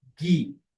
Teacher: ele é sempre pronunciado como uma gutural sonora